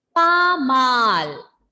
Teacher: Pasmal is not the pronunciation. S will be silent there, and the pronunciation is pamal.